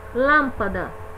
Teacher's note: nós damos mais ênfase à sílaba lã. Essa é pronunciada com mais força, então ela é a tônica. As demais são as sílabas pronunciadas com menos força, são as átonas. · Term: sílaba tônica